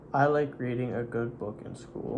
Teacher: Your tongue was way back in your throat for reading.